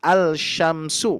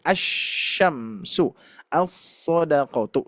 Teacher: maka ketika dibaca ini lamnya tidak dibaca maksudnya tidak terbaca ya kita idgamkan langsung ke huruf asyamsiyah